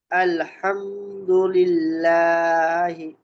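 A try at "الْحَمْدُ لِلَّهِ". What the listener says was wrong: এত লম্বা টান না আলহামদুলিল্লাহি এক আলিফ জাস্ট এক আলিফ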